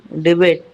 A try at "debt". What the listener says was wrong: Debt. It is called debt. Debit नहीं. B is silent. Debt. कर्जा.